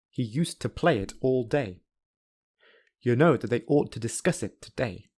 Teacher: the first sentence has three unstressed syllables whereas the second sentence has seven unstressed syllables however you can hear that the rhythm of each sentence sounds very similar